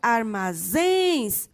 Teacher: A palavra armazéns, a sua sílaba tônica é o zens, acentua-se.